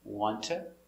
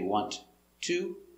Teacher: The sounds are linked together. Wanta. We don't say want to.